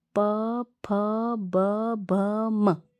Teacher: ओष्ठ वर्ण यानी कि होठ। इनको बोलते समय आपके दोनों होठ आपस में स्पर्श होते हैं।